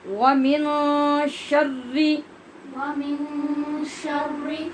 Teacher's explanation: یہاں پھر نون پر ہم اخفا کر رہے ہیں غنے کے ساتھ